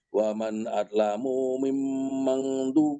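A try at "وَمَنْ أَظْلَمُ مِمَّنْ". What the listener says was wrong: Punya kepanjangan Pak, kurang lambat nyambung. Jangan lupa, jangan di langgamnya itu jangan terputus-putus. Kalau setiap Bapak ketemu mim di tasdid atau nun di tasdid, gunakan saja.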